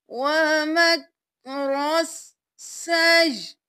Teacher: یہاں پہ ہم نے یا کو حمزہ کے ساتھ ملایا اور حمزہ کو ساکن کر دیا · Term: حمزہ ساکن